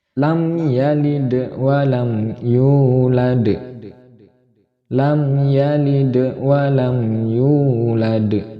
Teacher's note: Kalau walam yulad ayat yang terakhir yang di akhir ayat, karena wakof walam yulad ini qalqalah kubro, maka qalqalahnya harus lebih jelas lagi ketika dikumandangkan dari lam yalid yang pertama